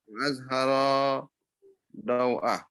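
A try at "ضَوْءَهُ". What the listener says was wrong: Nah, kalau gini nggak dibaca ha. Hu. Kalau ha yang seperti ini. Ha, ini ha. Ada alifnya otomatis baca. Kalau ini hu, ya.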